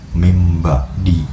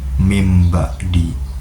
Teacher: Ee secara teori terdapat huruf nun mati yang bertemu dengan ba. Karena bunyi ba dihasilkan dengan kedua bibir, maka nun menyesuaikan diri menjadi bunyi lebih dekat dengan ba yaitu mim. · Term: asimilasi